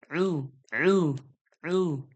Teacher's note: আইনটা গলার মাঝখান থেকে একটু চেপে আওয়াজ বেরোবে। হামজা পেশ উ যে হয়, আইন পেশ উ না হয়ে যায়।